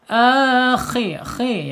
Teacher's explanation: makhrajnya ada di alhalq ya bagian atas ya tenggorokan atas